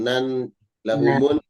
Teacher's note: harus sama nun tasdid ya, dengung. Nan lahumun dengung.